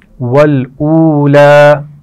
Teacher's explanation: واو مدہ ہے اور لام پر کھڑا زبر ہے تو دونوں کو کھینچ کر پڑھیں گے